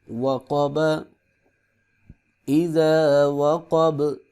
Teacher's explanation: با پہ با کو سکون کے ساتھ پڑھیں گے اور یہاں پہ قلقلہ بھی ہوگا کیونکہ با حروف قلقلہ میں سے ہے۔ وَمِن شَرِّ غَاسِقٍ إِذَا